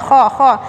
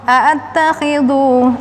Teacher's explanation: kha di ujung tenggorokan, hurufnya agak kasar